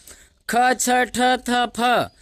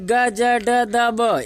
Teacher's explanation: इसको बोलने में अधिक समय लग रहा है। मतलब यह महाप्राण।